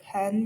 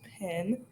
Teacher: the endings of words that end in en become in, like pen becomes pin